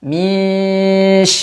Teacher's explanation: ada getarannya sedikit saja tidak sampai hilang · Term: sifat takrirnya